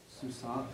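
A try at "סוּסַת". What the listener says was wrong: Okay, susat should be susat. The comment should be a pathek because the construct form has a pathek, not a comets.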